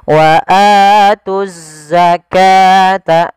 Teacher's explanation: Di sini ada bacaan alif lam syamsiyah. Waatuzza langsung diidgamkan ke huruf zai.